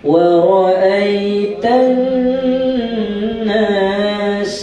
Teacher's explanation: Wajib dengung dengan kadar 2 harakat. Maksudnya kat sini kita perlu tekankan sebutan dan dengungkan dengan kadar 2 harakat. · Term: wajibul gunnah